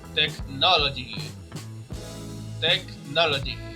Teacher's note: that no in technology is the strongest longest syllable. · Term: strongest syllable